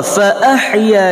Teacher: ya mad asli panjangnya 2 harakah.